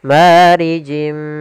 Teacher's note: ada kasratain bertemu dengan huruf mim yaitu idgham Bi ghunna kita masukkan lagi tanwinnya ke huruf mim dan ditahan gunahnya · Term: idgham bi gunnah